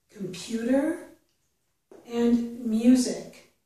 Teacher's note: So when the letter U follows some consonants, we often get the yuh sound. And in these words, we're getting both a yuh and an oo for the letter U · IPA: /j/